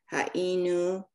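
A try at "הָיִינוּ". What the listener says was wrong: But you should pronounce the yud. I don't, you sort of did. It's ha'inu. Ha'inu. The yud is pronounced as a vowel because there's okay. Two, there's a vowel underneath it. No, it's a consonant.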